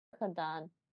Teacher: It's a voiced H sound, but very, very much in your throat, like you're going to throw up or something. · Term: the G in Dutch